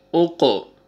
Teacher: حروف قلقلہ میں سے قاف آ رہا ہے، یہاں پہ ڈبل ساؤنڈ آئے گا